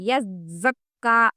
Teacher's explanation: یزکا میں زا سختی سے پڑھنا ہے، یعنی کہ دونوں دانتوں کو ملاتے ہوئے، یزکا سختی کے ساتھ، یذکرو، یذکرو، یز میں آپ محسوس کر سکتے ہیں آواز کیسے باریک ہو رہی ہے۔